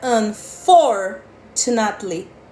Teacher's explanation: a sílaba tônica é for · A sílaba tônica dessa palavra é for, não é na. Muita gente fala unfortunately.